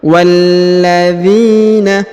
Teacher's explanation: Huruf wa langsung sambung ke huruf lam bertasdid ya.